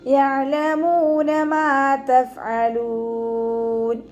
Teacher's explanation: അതിന് കൽക്കലയുടെ ലെറ്ററില്ലാത്തത് കൊണ്ട് ഹാഫ് സുക്കൂന് കൊടുക്കുക. മീമിൻ്റെ കൂടെ വാവ് മദ് വന്നു 2 കൗണ്ട് നീട്ടി കൊടുക്കുക.